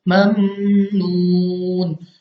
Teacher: वो इसलिए कि मीम मुशद्दद तो नहीं है, लेकिन मीम साकिन के कायदे में अगर हम देखें तो यहाँ पे हमारे पास इदगाम का कायदा लग रहा है, क्योंकि हरूफ यरमलून में से यहाँ पे मीम साकिन के बाद नून आ रहा है, इसकी वजह से हमने यहाँ पे गुन्ना करके पढ़ना है